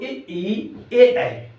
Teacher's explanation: इनका बल पड़ता है अगले भाग पर इसलिए इनको अग्र स्वर कहा जाता है